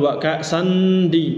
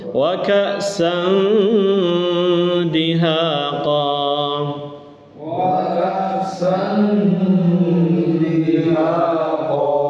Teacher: N-nya itu hampir hilang karena disamarkan.